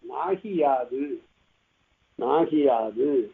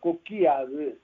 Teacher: இந்த உகரம் அறவே வராது. உகரம் போய் இகரமாகிவிட்டது. இதுக்கு பேர் தான் குற்றியல் இகரம்.